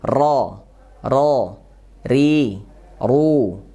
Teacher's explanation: cara membacanya kita tahu dulu makronya di mana offroa ini ya huruf ro ya ujung punggung lidah jadi di ujung lidah punggungnya menempel ke gusi atas